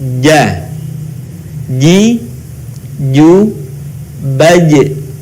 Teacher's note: Huruf ini dilafalkan dengan menyentuhkan tengah lidah kita ke daerah langit-langit.